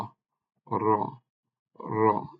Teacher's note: জিহ্বার অগ্রভাগ উপরের তালুতে সামনের তালু বরাবর দাঁতের গোড়ার একটু আগে স্পর্শ করবে জিহ্বাটা